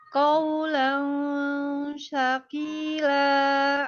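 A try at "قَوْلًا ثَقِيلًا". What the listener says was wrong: Jadi sya lagi, sa ya, thaqila. Iya betul, sa. Bukan shin itu ya, sa ya. Jangan jangan gitu, tapi siap-siap lidahnya, ujung lidahnya siap-siap ke gigi seri atas ya, ujung gigi seri atas.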